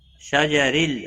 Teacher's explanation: را زیر کی وجہ سے باریک پڑھا جائے گا